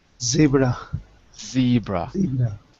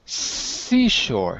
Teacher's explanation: The difference is you're using your vocal cords in Z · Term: voiced